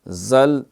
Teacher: انزل، یہ یہاں اخفا ہے۔ زل، زا جو ہے حروف صفیر ہے، سیٹی اس میں آواز سنائی دے گی